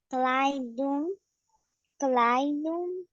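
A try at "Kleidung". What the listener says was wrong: Danke, good. Muy bien.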